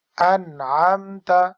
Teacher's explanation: انعمت middle of throat سے عین پڑھیں